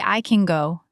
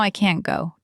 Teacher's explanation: My best tip is to focus on the vowel length. Can is often shorter and more relaxed. I can go. Can't has a little more tension and the air stop.